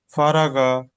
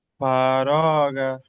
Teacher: কারণ মাঝখানে আলিফ মাদ্দা মানে টান দিতে হবে, আর শুরুতে হারাকার টান দেওয়া যাবে না, শেষে হারাকার টান দেওয়া যাবে না, বিজখানে আছে আলিফ মাদ্দা, এটা টান দিতে হবে।